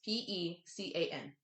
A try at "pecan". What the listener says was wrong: Pecan. it's con instead of can. Instead of pecan. To be fair, some people do pronounce it as pecan.